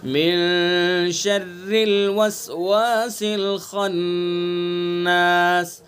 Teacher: खन्नास खा हरूफ मुस्तालिया में से है इसलिए खा को पुर करके पढ़ेंगे, और नून मुशद्दद है इसलिए नून के अंदर गुन्ना करेंगे।